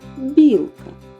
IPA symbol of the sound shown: б'